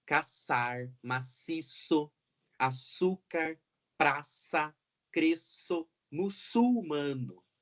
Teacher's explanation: essa fricativa língua dental surda · ar não faz vibração nas cordas então é surda